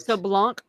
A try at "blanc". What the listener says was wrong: Blanc is the French. Blanc is the French word. You say blanc. blanc. Blanc. Blanc. You don't pronounce the C at the back.